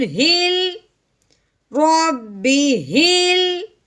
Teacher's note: हाँ जी, आगे हा मुतहरिक है, हा को आगे लाम साकिन के साथ हमने मिलाना है, कैसे, हा लाम ज़ेर हिल रब्बी हिल।